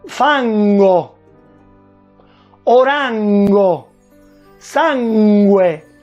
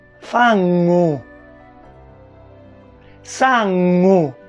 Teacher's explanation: Tutto quello che in italiano suona in questo modo, fango, orango, sangue, in siciliano invece si pronuncia fangu, sangu, vedete, gutturale, perché il suono viene appunto dalla gola